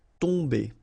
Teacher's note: Okay, so remember, you've got OM here, but after that you've got a consonant, so it does mean that this combination of OM will give you the sound on. Okay, you don't pronounce the M at all, so it's really a nasal, so it goes in your nose